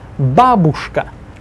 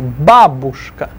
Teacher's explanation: Stress the ba, first syllable.